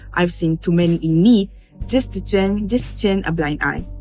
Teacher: It sounds serious but composed. The original accent uses a deeper fall after blind eye giving a more emotive and moral tone. You also notice that in the original turn is pronounced with a clear r and thewah a becomes a fuller a r sound in some words making the delivery firmer and more deliberate.